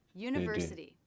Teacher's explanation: secondary stress on the first syllable and primary stress on the third syllable. · Then we have the N consonant sound and the schwa in the second syllable, which is unstressed. So the tongue tip will go to the roof of the mouth for the N.